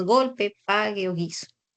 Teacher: la letra g con el dígrafo gu que representan a la oclusiva velar Sonora